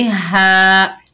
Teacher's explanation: हा के ऊपर खड़ा जबर, एक अलिफ की मिकदार खींच कर पढ़ेंगे